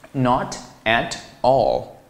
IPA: nɑt æt ɔl